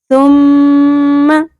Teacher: سین کی طرح نہیں پڑھنا، سیٹی کی آواز نہیں آنی چاہیے. میم کے اوپر تشدید ہے، اس کا مطلب ہے یہاں پر غنہ ہوگا.